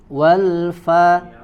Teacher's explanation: tempat keluar hurufnya dari ujung gigi seri atas ditempelkan ke bibir, ya, bibir bagian dalam. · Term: huruf fa